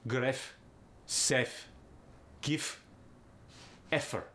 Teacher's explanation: the v goes to f in the medial or the final positions